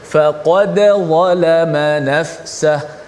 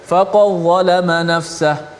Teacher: Dal tu mesti dijelaskan mati, bunyi secara izhar mati tu.